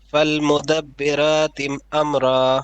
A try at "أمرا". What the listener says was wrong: Ra more heavy.